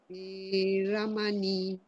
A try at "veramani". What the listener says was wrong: Veramani, veramani. So you drag the E and the I.